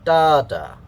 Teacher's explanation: the first syllable is stressed that has a higher pitch a higher sound level and the second syllable is unstressed uh with a lower pitch so a lower sound level dada so because lettuce can be